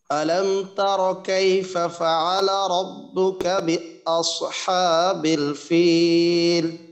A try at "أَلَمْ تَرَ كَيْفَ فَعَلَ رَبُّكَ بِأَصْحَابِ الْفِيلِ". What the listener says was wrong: র বায়ের উচ্চারণ গুলাকে আরেকটু মোটা করে করা যায়,